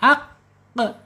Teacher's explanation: makhrajnya ada di pangkal lidah yaitu pangkal lidahnya terangkat menyentuh langit-langit